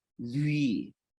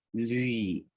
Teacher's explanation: you're closing your lips sort of like an oo or a W, and you're bringing your tongue up to that roof of your mouth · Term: labiopalatal approximant